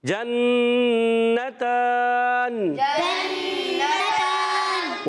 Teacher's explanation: اچھا، بعض بچے یہاں جنتان میں جلدی کر رہے ہیں، غنہ ہے، ایک الف کا غنہ کرنا ہے